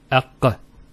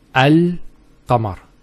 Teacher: So the L is where the teeth and the tongue come together, and the qaf, aq, comes from the throat, which is far from the articulation point of the lam. And because of this distance, it's much smoother to say it, because you're going from one articulation point to one that's further down.